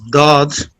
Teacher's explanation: edge of tongue touching gums of upper molars